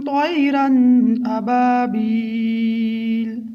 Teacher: یہاں پر تنوین کے بعد حمزہ دوسرے کلمے میں ہے تو اس لیے ہم یہاں پر اظہار کریں گے۔ اظہار کی مقدار 1 الف کے برابر ہے۔